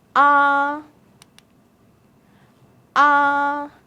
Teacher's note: the first tone is a flat tone sounds like ah ah you can try to react to me